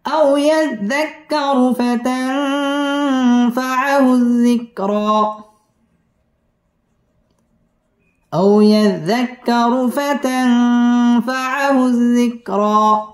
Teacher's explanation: আও জবরের বাম পাশে জজমওয়ালা ওয়াও লিনের হরফ তাড়াতাড়ি পড়তে হবে। ইয়াজ্জা জাল তাসদীদ ওয়ালা হরফ, ইয়াজ্জাক্কা কাফ তাসদীদ ওয়ালা হরফ, আও ইয়াজ্জাক্কারু র পুর হবে, ফাতাং ইকফা এখানে গুন্নাহ করে পড়তে হবে।